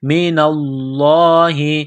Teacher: لفظ اللہ کے نام سے پہلے زبر ہے تو لفظ اللہ کے نام کو موٹا کرنا ہے. من اللہ، میم کو نون کے ساتھ پلس کرنا ہے، نون ساکن کے بعد واو ہے تو نون ساکن پر غنہ کریں گے.